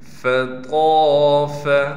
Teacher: طا موٹے حروف میں سے ہے، لہٰذا طا کو موٹا پڑھنے کے ساتھ طا کے بعد الف حرف مدہ میں سے ہے، اس لیے طا کو ایک الف کی مقدار کھینچ کر پڑھیں گے